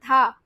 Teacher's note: जब आप धा बोलो, आपकी जो जीभ है दांतों को टच कर रही है